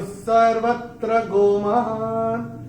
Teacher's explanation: तो चूंकि यहां पे एस ए रहा है तो विसर्ग का उच्चारण होगा आधा एस · य के बाद दूसरे चरण में जो विसर्ग आ रहा है उसके बाद का अक्षर है स, और विसर्ग के बाद जब श, या स आता है तो विसर्ग का उच्चारण, ये नियम हमने यहाँ पे लिखे हुए हैं वो, तो विसर्ग का उच्चारण होता है आधा श या स। तो चूंकि यहाँ पे स आ रहा है तो विसर्ग का उच्चारण होगा आधा स